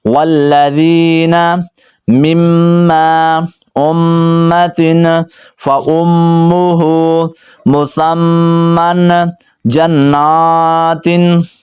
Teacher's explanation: میم مشدد پہ نا ہمیشہ غنہ ہوتا ہے، تو میں غنہ کر رہا ہوں